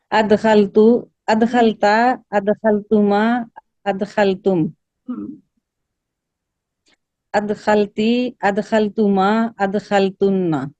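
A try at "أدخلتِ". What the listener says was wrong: آپ کے یہ تینوں جو ہے تھوڑے تھوڑے لمبے ہو گئے. ٹھیک ہے, اس کو آپ پڑھیں گی ادخلتا ادخلتی ادخلتو. ٹھیک ہے, پیش ادا کر کے, زبر زیر پیش ادا کر کے اس کو چھوڑ دیں, اس کو پکڑے نہ رکھیں تھوڑی سیکنڈ بھی. ٹھیک ہے, ادخلتا ادخلتی ادخلتو.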